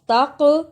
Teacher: جزم کی صورت میں حرف قلقلہ ہے، یعنی اس حرف کو ہلا کر پڑھتے ہیں